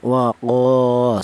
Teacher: Berhubung ada alifnya ini mad thobi'i yaitu berfungsi untuk memanjangkan bacaan, maka huruf qof yang berharakat fathah ini dipanjangkan yaitu dua harakat atau dua ketukan